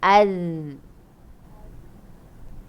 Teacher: Dia kena terus bunyi macam Z, tapi kita keluarkan lidah. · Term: zal